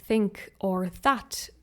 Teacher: the th might change to a more hard t or d sound